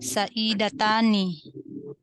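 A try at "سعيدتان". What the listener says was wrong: Oke, Masya Allah, Sa'idatani.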